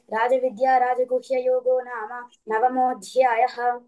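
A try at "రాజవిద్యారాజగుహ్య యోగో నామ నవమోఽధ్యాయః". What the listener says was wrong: మహాప్రాణాలు ఒక మూడు నాలుగు చోట్ల లైట్ గా పలికావు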